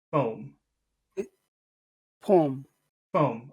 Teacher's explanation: in English the O has an oo sound at the end of it always